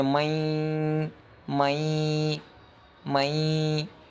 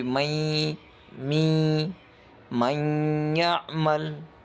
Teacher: اس میں نون کا ساؤنڈ آئے گا، تھوڑی سی نیزل ساؤنڈ اس میں آئیں گے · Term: گننا